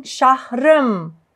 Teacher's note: the second vowel disappears